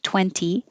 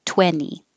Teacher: in the word 20, you either say it with a T, 20, or no T at all, 20. But you don't change it to a D.